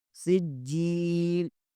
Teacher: ہے، یہاں اخفا ہوگا، سجیل، سین زیر کو جیم کے ساتھ ملائیں گے اور جیم پر کلکلا کریں گے ، جیم زیر کے آگے یا مدہ ہے، اسے بھی ایک